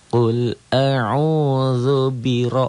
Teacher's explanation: rnya tebal tafkhim karena baris di atas